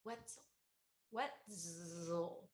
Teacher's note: you partially devoiced the Z. You don't say the Z all the way. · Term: devoiced Z